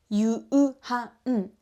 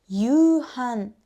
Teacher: the vowel in yu, which is u, is being extended. But the written u is not pronounced as a separate sound. As you can hear in the natural Japanese, natives often stretch one vowel sound instead of pronouncing 2 vowels separately. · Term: long vowel